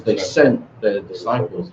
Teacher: we'll glottalize that t in sent